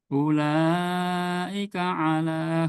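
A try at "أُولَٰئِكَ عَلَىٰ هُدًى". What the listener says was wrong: Kurang panjang ulanya. Ula 4 harakat minimal. Oke, hati-hati sama tamtid ya.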